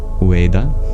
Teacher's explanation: the vibration of the V became more like a W